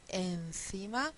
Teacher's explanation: cuando estamos pronunciando la n ya tenemos la lengua entre los dientes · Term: n interdental